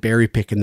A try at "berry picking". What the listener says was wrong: You went berry picking with no G on the end. I noticed that.